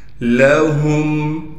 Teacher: میم پر غنہ بالکل نہیں کریں گے